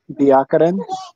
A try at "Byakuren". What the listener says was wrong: Well, you're overemphasizing the Y. It's just Byakuren. No, it's not Byakuren. It's just Byakuren. Yeah, I mean you say the B and the Y, but it's very close together, so it's just Byakuren.